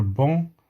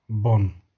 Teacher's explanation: Soit parce qu'au masculin, il y a une voyelle nasale, et au féminin, la consonne N.